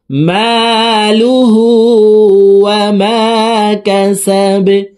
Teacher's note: মালুহু, হার উপরে উল্টা পেশ আছে, দেখুন। তো এই হাকে ঠোঁট গোল করে 1 আলিফ টানে পড়ব